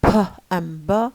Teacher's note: the bilabial closure, and this happens when we have the two lips pressed together, as in p and b.